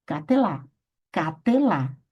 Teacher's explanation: Com a presença do méteg, a vogal será longa